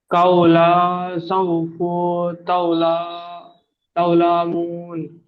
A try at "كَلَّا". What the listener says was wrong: কাউলা না, কাফ লাম জবর কি হয়? হ্যাঁ, লাম আলিফ জবর লা, তাহলে কি হবে?